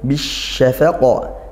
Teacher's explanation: ada lam takrif yang langsung masuk ke huruf syin sehingga ini idgham syamsiyah